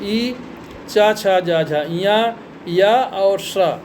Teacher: अगला तालु, तालु से उच्चारण होने वाले वर्ण जो हैं ई, चा, छा, जा, झा, या और श, इनका उच्चारण स्थान है तालु, क्योंकि इनका उच्चारण करने में जीभ ऊपर की तरफ तालु में जाके स्पर्श होती है